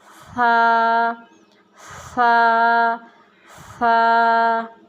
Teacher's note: آگے سا، سا پڑھتے وقت اس چیز کا لحاظ کرنا کہ سیٹی کی آواز بالکل نہ آئے، نرمی سے اس کو ادا کرنا ہے اور زبان کو ہلکا سا باہر نکالنا ہے، دونوں دانتوں کے درمیان میں لے کے آنا ہے، آرام سے ہلکا سا اس کو باہر نکالنا ہے، سا، سا، سا۔